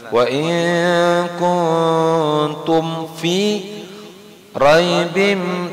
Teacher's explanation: Kemudian tumnya itu kuntum itu ada fa setelahnya tidak boleh didengungkan. Bacanya jelas.